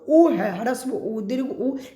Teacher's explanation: ह्रस्व उ दीर्घ ऊ इसका उच्चारण ओष्ठ से होता है